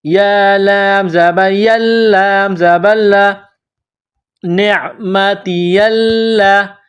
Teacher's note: نون عین زیر نع، میم زبر ما، نعم، تا زیر تی، نعمتی، یا کو لام کے ساتھ پلس کرنا ہے، لام میں سختی کرنی ہے، لام مشدد ہے۔ یا لام زبر یل، لام زبر لا، نعمتی اللہ، تا کو یا کے ساتھ پلس کرنا ہے، یہ مد ہے، اس کو تھوڑا کھینچ کر پڑھیں گے۔